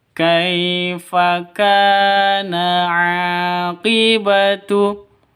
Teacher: Kaifa sifat lin lentur lemas, tidak boleh disentat, tidak boleh didengungkan.